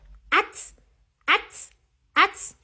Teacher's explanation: I am not attaching any vowel sound to the T because it has a vowelless sound. So just call the sound of that letter T.